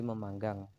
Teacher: Fonem P meluluh menjadi bunyi nasal M.